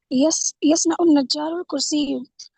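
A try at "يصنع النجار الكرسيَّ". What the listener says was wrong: کرسیہ، مفعول ہوگا آبجیکٹ ہوگا، یہ ہاں یہ نصب آئے گا، اس پہ زبر آئے گا.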